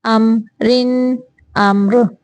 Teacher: وقف کی صورت میں امر، امر۔ ام میم پہ بھی غنہ نہیں کرنا، ام زیادہ لمبا نہیں کرنا، بس ظاہر کرنا ہے، یہاں پہ اظہار کا قاعدہ ہے، صرف ظاہر کرنا ہے۔